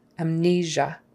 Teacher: That S in there, it's not an S, not amnesia or amnesia. It's a Z, that kind of a ZH kind of sound, like there is in treasure.